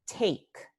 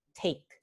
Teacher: al principio de palabra tenemos el alófono infiel con aspiración